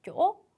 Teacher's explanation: 꺾듯이 올리며 음을 튕기듯이 빠르게 읽어준다. 그러니까 늘어지는 게 아니라 이 튕기는 느낌이 빠르게 끝나야 돼요, 여러분.